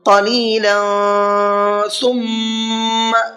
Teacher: ثم کے میم میں غنہ کریں گے اس لیے کہ نون اور میم پر تشدید ہوتی ہے